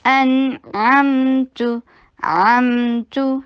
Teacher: आइन को हलक से अदा कीजिए, फतहा के लिए शॉर्ट रखिए और मीम के ऊपर तवस्सुत का टाइम दीजिए। अमतु ता के ऊपर दम्मा के लिए होंठों को गोल कीजिए और शॉर्ट रखिए।